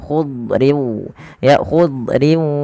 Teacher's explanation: Padahal huruf dad tidak punya sifat qalqalah, tapi dia punya sifat yang pertama isti'la, yaitu pangkal lidah terangkat dan dia menebal. · Kemudian yang kedua itbaq. Itbaq itu lidah kita lebih melekat-lekat ke atas langit sehingga dia menebal suara huruf dhatnya.